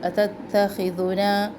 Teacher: خو موٹے حروف میں سے ہے اور دال نرم، تو خو کے ساتھ دال کو بھی موٹا نہیں کرنا اور دال کے ساتھ خو کو بھی نرم نہیں کرنا